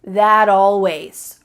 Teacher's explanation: This isn't always done, but it's often done when native speakers are talking quickly. We link together words by making the final T change into a D.